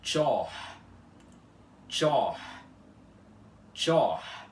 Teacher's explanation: É apenas um T chiado seguido de um O aspirado.